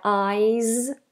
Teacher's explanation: The difference is a voiced S.